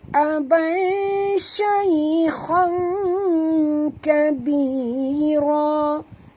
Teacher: Kerana kita masukkan bunyi tanwin ini ke dalam huruf kaf. Ya, jadi bunyi dia tengah-tengah khang, separuh huruf kha, separuh huruf kaf. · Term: ikhfa